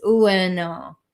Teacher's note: we say it like a W, it's really ueno